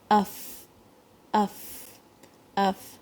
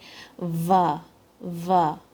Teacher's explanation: تو اف اف اف, and you can feel the ایئر جب ہم فا کہتے ہیں تو اف اف جو سکون کے ساتھ فا کہتے ہیں تو پھر تھوڑی سی ایئر ایکسپیل ہوتی ہے